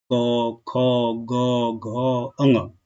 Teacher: क, ख, ग, घ और अंग, इसका जो उच्चारण स्थान होता है बालक वो होता है कंठ